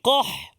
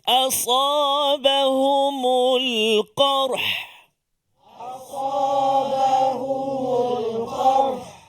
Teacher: Sebelum dia huruf qaf, huruf ra yang sukun kena bunyi.